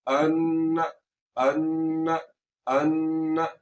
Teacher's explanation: आवाज को नाक में ले जाकर थोड़ा सा लंबा किए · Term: नून मुशद्दद